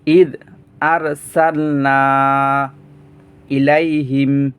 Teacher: মধ্যে মুনফাসিল, মদের হরফ এখানে আলিফ, মদের হরফের পরে অন্য একটি শব্দের প্রথমে হামজা আসছে, তাই তিন আলিফ টেনে পড়তে হয়।